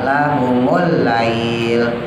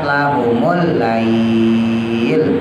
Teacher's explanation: Nah itu namanya Mad layin panjangnya boleh dua boleh empat